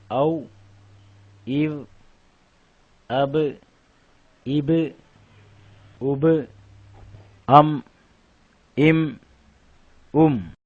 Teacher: வாவ் ப மீம் இரு உதடுகளுக்கு மத்தியில் வெளியாகும்.